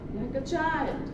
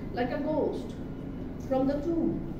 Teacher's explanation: আমরা স্ট্রেস বা এমফাসিস দিচ্ছি কোন ইয়াটাতে, চাইল্ডকে, এরকম প্রথম 2টা আনস্ট্রেসড, পরেরটা হলো স্ট্রেস।